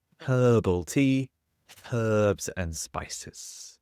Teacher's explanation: in the UK we do pronounce the h